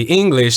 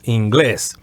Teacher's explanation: In English, we would say English. The accent would be in the first syllable. In Spanish, it would be the opposite. It would be in the second syllable, inglés.